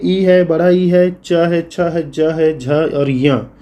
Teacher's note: ई है, बड़ा ई है, च है, छ है, ज है, झ और य, इसका उच्चारण स्थान तालव्य से होता है